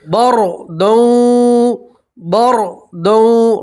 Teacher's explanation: را ساکن سے پہلے زبر ہے، را کو آپ موٹا پڑھیں گے، پور پڑھیں گے، ٹھیک ہے۔